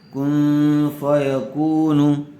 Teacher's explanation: کن غنّے کے ساتھ اخفا ہوگا۔ قاف و زبر قو، واو ساکن سے پہلے زبر آیا ہوا ہے، اس لیے واو لین ہوگا، اس کو نرم آواز سے جلد ادا کریں گے۔